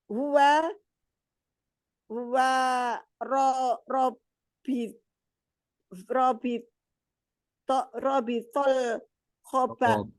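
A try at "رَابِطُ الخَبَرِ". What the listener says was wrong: pakai dhammah rabitu khobari. Belum mudhof ilaih. Rabitu khobaril mubtada'i. Ya, rabitu khobaril. Huwa rabitul khobari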